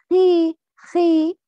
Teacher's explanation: it's heavy, but not like خا and خو